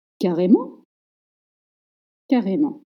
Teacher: Make sure in this case to stress the last syllable.